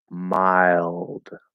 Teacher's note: of course with a stop D at the end